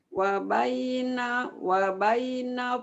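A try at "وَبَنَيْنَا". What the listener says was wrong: bukan, ada nunnya. Wa banaina.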